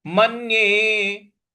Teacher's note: म के बाद जो न है उस पर हमको आघात देना है, मन्ये। मन्ये, तो म पर, म के बाद जो न है इस पर हमको बल लगाना है, आघात देना है।